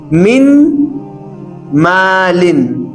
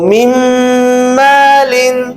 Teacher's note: تو اس میں آپ دیکھ سکتے ہیں میں نون کو مکمل طریقے سے نکال دوں گا, اور اس کے بعد میرے پاس میم میم میم زیر میم, میم زبر ما میم, ایسے طریقے سے. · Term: غنہ